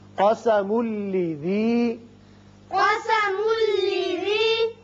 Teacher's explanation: میم کو جب لام سے ملائیں گے، تنوین کے بعد لام ہے، ادغام بغیر غنہ ہوگا